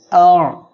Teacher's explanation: আইন অক্ষরটা গলাটা চেপে উচ্চারণ করবেন।